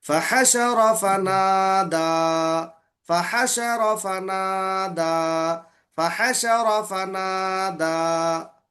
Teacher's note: रा को नहीं खींचना, रा मुतहरिक है ना